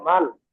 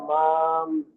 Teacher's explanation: নুন সাকিনের পরে বা আসার কারণে মিম ধরে পড়তে হবে। মিম মিম সেবার মাম, এই ছোট্ট যে মিম আছে, এই ছোট্ট মিমটি ধরে পড়তে হুম, হবে। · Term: ইকলাব